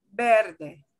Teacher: there is no sound like a v v where you put your teeth on your lower lip that doesn't exist in spanish they'll both will sound like a b words with b and · b and v sound the same okay only difference is sometimes it will be slightly stronger